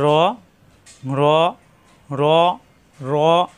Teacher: জিহ্বার আকার পিঠ উপরের তালুতে লাগবে র র র মোটা হরফ